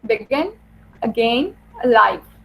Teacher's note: अब पहला जो सिलेबल है इन वर्ड्स का वो अनस्ट्रेस्ड है. Like in बिगिन, बे is unstressed and गेन and stressed. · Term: iambus